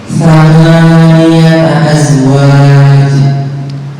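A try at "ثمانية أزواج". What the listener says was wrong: Jim kurang di tengah lidah ya. Namanya huruf syajariyah. Syajariyah itu ada 3, shin, jim, ya, yang keluar dari tengah lidah. Hanya perbedaan antara ya dengan shin, jim itu memantul. Azwaj, azwaj.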